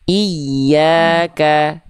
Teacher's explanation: untuk huruf ya bertasydid ya, itu dia penekanannya lebih kuat.